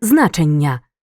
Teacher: приголосний ні у слові значення знаходиться між двома голосними тому подовжується у звуковому записі подовження позначаємо двокрапкою А на письмі подвоєними літерами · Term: подовжену вимову приголосних